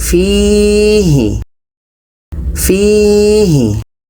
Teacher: Fi dibaca panjang karena ada huruf 'ya' yang tidak dibaca, didahului oleh kasrah. · Fi ini dibaca panjang karena ada ya mati sebelumnya baris bawah. Ya mati sebelumnya baris bawah. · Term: mad asli